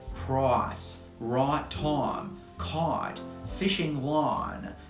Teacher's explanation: The I vowel has turned into a because that's the reduction of the glide.